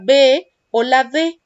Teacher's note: se siente la vibración de las cuerdas vocales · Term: sonoros